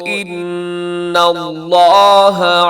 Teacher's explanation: الذین قالوا ان اللہ یہاں نون مشدد ہے، ان پہ ہونا کیجیے گا، لفظ اللہ کو آگے آپ نے موٹا کر کے پڑھنا ہے